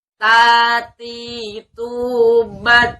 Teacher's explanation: Makhrajnya itu bagian ujung lidah ditempelkan ke tempat pertama tumbuhnya gigi seri atas. Ya, di dalam kitab dikatakan tarful lisan ila usul at-tana al-ulya.